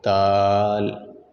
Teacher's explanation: دال بالکل جہاں سے تا ادا ہوا، تا اور دال ان دونوں کا مخرج ایک ہی ہے، یعنی زبان کی نوک اور اوپر والے دونوں دانتوں کی جڑ